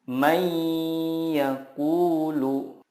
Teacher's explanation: jangan lupa untuk menahannya dan disertai dengan gunnah 2-3 harokat